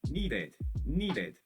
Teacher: Então eu falo bem aberto o ed